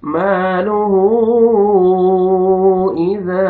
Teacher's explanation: ہا کے اوپر الٹا پیش ہے، واو مدہ کے قائم مقام ہے، آپ نے کھینچنا ہے. اوپر مدے جائز ہے، آپ نے 3 سے 4 الف کے برابر آپ نے کھینچنا ہے